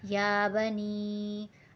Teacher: یا کو ہمیں ایک الف کی مقدار کھینچ کر پڑھنا ہے